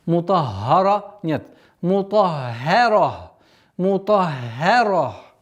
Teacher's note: Обратите внимание, та твердая, ра твердая, а между ними ха мягкий звук.